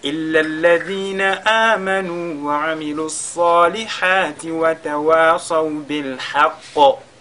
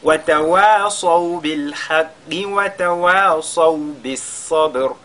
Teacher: Si on s'arrête sur la lettre Qaf, ici on fera al-qalqala, parce que dans ce cas, elle sera supposée être sakina.